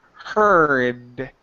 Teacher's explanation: missing is the D sound at the end